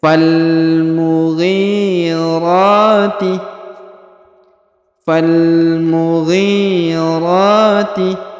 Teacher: kemudian huruf RO dipanjangkan dua harakat karena terdapat Alif kecil